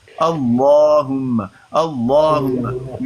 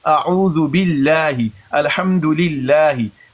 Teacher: جیسے اللہم، تو لفظ اللہ پر کھڑا زبر، اس سے پہلے ہے اس سے پہلے الف پر ہے زبر، تو یہ جو لام ہے اس کو مفخم پڑھیں گے، منہ بھر کے پڑھیں گے